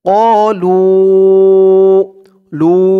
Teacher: এখানে 3 আলিফ টান হবে মধ্যে মুনফাসিল